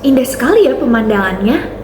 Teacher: intonasi turun tajam yang ditandai dengan kalimat seru. Biasanya ini untuk kalimat-kalimat seperti kaget, senang, marah, ataupun heran. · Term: intonasi eksklamatif